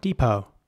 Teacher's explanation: in American English, the E at the beginning would be pronounced like a E. So it's depot with a very long E sound